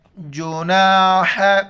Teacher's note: ہا کو گلے سے ادا کرنا ہے ، جیم پیش جو، نون الف زبر نا، ہا زبر ح،